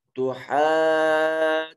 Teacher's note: تو حاجونا میں یہ ہا کے اوپر بڑی مد ہے، اس کو 3 سے 4 الف کے برابر لمبا کریں گے